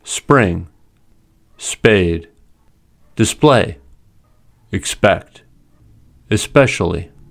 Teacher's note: when P is in a consonant cluster after S, it is unaspirated. There is no puff of air.